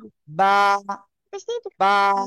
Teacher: দুই ঠোঁটের ভিজা অংশ থেকে বা উচ্চারিত হয়।